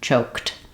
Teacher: don't correspond to sounds so when you're trying to say choked you're basically just saying the same thing as choke but adding the T sound